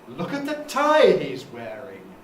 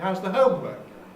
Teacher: Here we very typically put the nucleus on the noun, not on the verb.